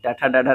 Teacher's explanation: ठ ड ढ न इस सभी का जो है वो मूर्धन्य, ट ठ ड ढ न का मूर्धन्य। ये वर्ण कठोर तालु के मध्य भाग तथा जीभ के उल्टी हुई नोक के निचले भाग से स्पर्श होकर उच्चारित जो है वो होते हैं।